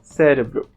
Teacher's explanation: aparece mais fechado no português europeu Ágape Ágape assim como também o e aparece mais fechado